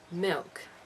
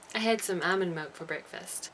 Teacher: One interesting part is the way New Zealanders pronounce the L sound in words like this. Of course different people speak differently, but it often sounds like a W